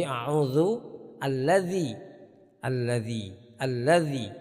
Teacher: Ya, jadi harus dibiasakan baca dzal, seluruh Al-Qur'an membaca dzalnya tanpa desis